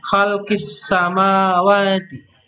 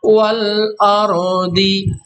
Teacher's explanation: Alif lamnya tidak dibaca dengan jelas, tapi yang sekarang wal ardi lamnya dibaca jelas.